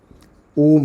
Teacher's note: जब ओम आप बोलते हैं तो ओ बहुत देर तक बोलते हैं, फिर लास्ट में बोलते हैं म, तो इसीलिए ये होता है प्लुत। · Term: प्लुत स्वर